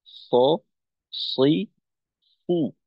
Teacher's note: আমাদের জিহ্বার আগা একেবারেই সামনের নিচের দুই দাঁতের আগাকে স্পর্শ করবে, সামনের নিচের দুই দাঁতের একেবারেই আগার সঙ্গে লাগবে সদ উচ্চারণ করার সময়।